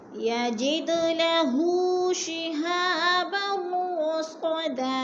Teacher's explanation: फमन यस्तमि'िल आना फमन यस्तमि'िल आना यजिद लहू शिहाबन रसदा यजिद लहू शिहाबन रसदा। यजिद पे दाल कलकला है, दाल को हिलाकर पढ़ेंगे और लहू पे उल्टा पेश है, थोड़ा सा खींच कर पढ़ेंगे।